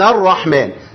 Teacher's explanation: اللام دي دخلت في الراء فمافيش ل بتنطق معايا خالص لا عند الوقف ولا عند الوصل